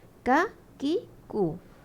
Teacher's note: Memang K tu sendirinya ada sikit hamas. Memang menepati dengan kaf ada sikit hamas. Cuma bila kalau misal kata kaf ni mati, dia akan kuatlah hamas dia.